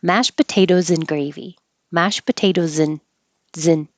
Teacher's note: You can, instead of mashed potatoes and gravy, you can say mashed potatoes and gravy. And gets shortened to just an in, and the Z from potatoes connects and makes a zin.